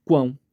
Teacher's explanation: Começa com o U, tem o A nasalizado forte, que é o ápice da sílaba, e termina com o som de U. No início aqui, ó, tem a letra C, que faz o som do Q, iniciando a sílaba quão, e aí fica quão, quão, quão, quão. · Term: tritongo